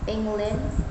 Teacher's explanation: England would have strong clap on the first syllable